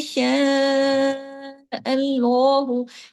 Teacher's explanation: श बारीक है लेकिन उसके ऊपर मद है। उसको खींचने के लिए आपने आवाज को बारीकी के साथ ऊपर लेके जाना है। और कैसे ये रहेगा जब आपका मुंह साइड वाइज खींच खींचेगा ऊपर नीचे नहीं ऊपर ऊपर नीचे अगर आप मुंह खोल देंगे ना और जुबान को श ऐसे कर देंगे हैवी हो जाएगा। · شاء باریک ہے لیکن اس کے اوپر مد ہے، اس کو کھینچنے کے لیے آپ نے آواز کو باریکی کے ساتھ اوپر لے کے جانا ہے